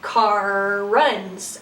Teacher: so you have those two R's kind of merging together